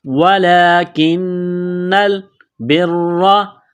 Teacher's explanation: اس نون کو لام کے ساتھ پلس کرنا ہے، وَلَكِنَّ الْبِرَّ، را کو موٹا کرنا ہے زبر کی وجہ سے، تشدید ہے تو سختی کریں گے · کڑا زبر ہے، ایک الف کے برابر اس کو کھینچیں گے، کاف کو باریک کرنا ہے، نون کے ساتھ ملانا ہے